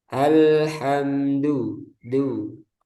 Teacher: dalnya keluar udara, harusnya enggak